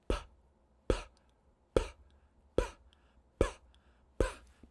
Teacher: bilabial, two lips, and we're stopping the air